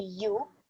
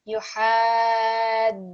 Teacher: So this word here, what you want to do is you want to have 1 second on the ya because it's dhamma